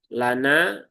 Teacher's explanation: Lana di situ ada lam dan nun ya. Lamnya tipis, nunnya pun juga tipis ya. Jadi lana bukan lo lono no lono ya.